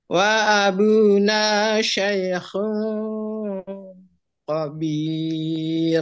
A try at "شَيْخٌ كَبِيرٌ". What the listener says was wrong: Bukan khabir ya, kabir. Kaf, menggunakan ka. Ka.